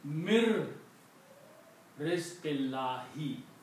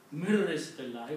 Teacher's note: Even though separately it is written as min rizqillahi, but when you read together, you will sound ra twice, not sound noon. Mir rizqillahi with the one line there. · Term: Idgham